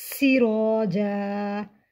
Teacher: الف سے پہلے زبر الف مدہ کو ایک الف کے برابر کھینچ کر پڑھیں گے